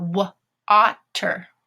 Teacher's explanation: the A is going to be that lazy vowel, that schwa sound